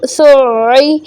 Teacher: اسی طرح سین عین پہ سع، عین زیعی سعی. دیکھیں عین پہ تھوڑا سا رکنا ہے، شد ہے اس لیے